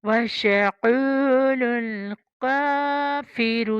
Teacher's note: یہ کافر پتلی کاف، قو موٹی کاف